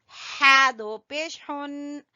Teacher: हा को गले के दरमियान से निकालेंगे